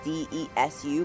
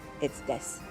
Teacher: it is written as d e s u but it's not pronounced desu. It's des